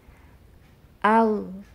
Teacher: Harus berasa keluar makhrajnya itu dari tenggorokan bagian atas. Jika belum naik ke tenggorokan bagian atas, berarti makhrajnya belum tertunaikan. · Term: huruf ghain